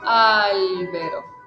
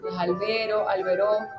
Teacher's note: siempre arrancas acentuando la primera sílaba